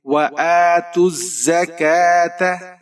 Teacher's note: تا کے اوپر پیش ہے، آگے زا مشدد ہے، تا کو زا کے ساتھ ملائیں گے۔ زا سیٹی والا حرف ہے، آپ نے اسے باریک پڑھنا ہے۔ · کاف کے اوپر کھڑی زبر ہے، ایک الف کی مقدار تک کھینچ کر پڑھیں گے